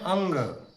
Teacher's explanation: हवा कंठ से आती है और नाक की ओर सीधे मुड़ जाती है। इसीलिए इसको नासिक्य कहा गया है।